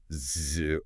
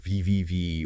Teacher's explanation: So when we produce voiced sounds like z or vvv or even all vowel sounds, those vocal folds are vibrating super fast as the air passes through them. It's pretty amazing you can actually feel that vibration if you gently touch your Adam's apple or the front of your throat while you hum or make a sound.